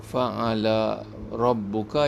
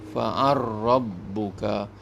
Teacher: Lam tu baris atas, ra tu baris di atas, fathah. Jadi bila digabungkan di dalam Imam As-Susi ini, dia baca fa'ala rabbuka jadi fa'ar rabbuka. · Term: idgham kabir